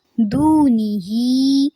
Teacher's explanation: ہا کھڑی زیر ہی کو تھوڑا سا لمبا کریں گے